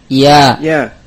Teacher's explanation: Ya keluar dari wasatul lisan, dari tengah lidah, ma'al hanak, ma'a ma yuhadhihi minal hanak, dengan langit-langit yang tentunya yang sejajar dengan bagian tengah lidah.